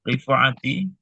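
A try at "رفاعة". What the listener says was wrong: Rifa. Kan ada alifnya setelah ro. Masa rifa? Rifa'ah kan? Hadis Rifa'ah bin Rafi' gitu. Wali hadis Rifa'ah ibni Rafi'.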